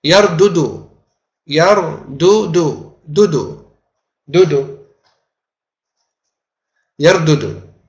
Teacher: there's a heaviness caused by two identical letters in a row, both having a haraka